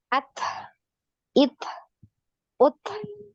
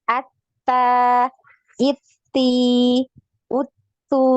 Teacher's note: tidak ada bunyi suaranya ke H atau ke C ya. Nah, tapi ini nafasnya aja yang ngalir.